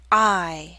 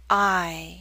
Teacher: I move from a more open to a more closed position I two say ow when are your lips in a smaller